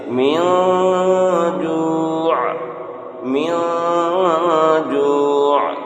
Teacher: من جوع، یہاں پر اخفا نون ساکن کے بعد حروف اخفا کے 15 حروف میں سے جیم ہے، اس لیے یہاں پر اخفا ہوگا، اور جب یہاں پر وقت کریں گے ٹھہریں گے جو میں، یہاں پر عین کو ظاہر کریں گے، عین کے مخرج کو نکالیں گے